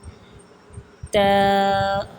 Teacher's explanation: زبان کی نوک اوپر والے دانتوں کی جڑ سے لگے اس سے تا ادا ہوتی ہے